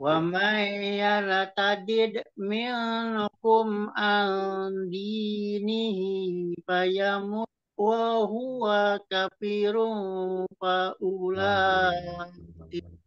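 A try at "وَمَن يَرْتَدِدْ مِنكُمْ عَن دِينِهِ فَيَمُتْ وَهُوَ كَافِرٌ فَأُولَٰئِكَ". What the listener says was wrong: Nah, barusan K-nya kecepatan. Hilang matobi'inya. Di K ya. Wa huwa kafirun faulaik. Jadi K-nya hilang itunya.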